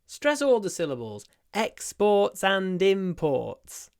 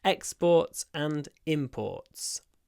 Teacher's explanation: So exports and imports. In both cases, we stress both syllables.